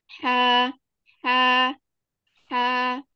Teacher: namun kalau huruf Ha dia tidak melibatkan katup epiglotis